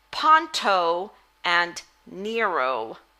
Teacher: do you hear that long o at the end of those names